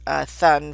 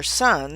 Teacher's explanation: a child who says thun for sun, so their tongue is coming out